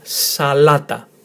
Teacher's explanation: Emphasis on the middle syllable, salata.